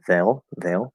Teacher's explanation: you can just make it the third vowel day and then do l color